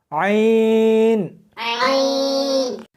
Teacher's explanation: اس کو حلق میں سے سختی کے ساتھ نکالنا ہے